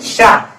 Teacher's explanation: ये शा ऐसे बोलते हैं शा, तालु से जीभ की नोक टकरा, इसलिए इसे इधर रखा गया।